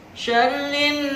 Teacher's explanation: Yang ketiga hukum tajwidnya adalah nun bertasdid. Syarrin ditahan 2-3 harokat, disebut dengan gunnah.